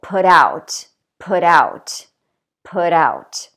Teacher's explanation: with a phrasal verb, we're going to do the opposite, and we're actually going to stress the second word. For example, put out, put out, put out.